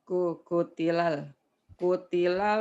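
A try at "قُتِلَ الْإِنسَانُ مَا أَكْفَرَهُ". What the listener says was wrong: Mana kukutilal? Kunya cuma satu. Kukutilal. Kutilal. Qutilal insan. Qutilal insanu ma akfarah.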